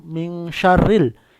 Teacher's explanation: nun mati bertemu shin itu disebut bacaan ikhfa, namanya ikhfa hakiki, bacanya adalah samar. Min syarril shin, kalau baca shin harus tebal, ya.